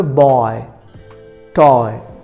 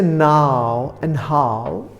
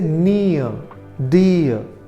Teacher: Single vowel नहीं है, बल्कि दो वाउल्स मिलकर एक यूनिट बन रही है. इसे इंग्लिश में कहा जाता है डिफ्थंग्स.